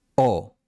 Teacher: la O española no tiene diptongo. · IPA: [o]